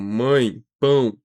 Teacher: É quando a gente usa o tio, por exemplo, mãe, pão. Percebe como é que o som ele sai pelo nariz? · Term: nasalização